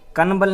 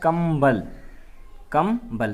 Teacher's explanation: अनुस्वार के बाद जहाँ पर भी पा, फा, बा, भा बाद में आएंगे तो वहाँ आवाज़ देगी ये माँ का आवाज़ देगी